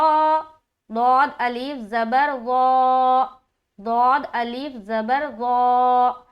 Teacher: ज़बान का जो बगली किनारा है ना उसको अपने दाढ़ में टच करके दौद की अदायगी करेंगे